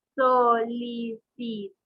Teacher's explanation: De igual manera lleva la mayor fuerza de voz en la última sílaba, es aguda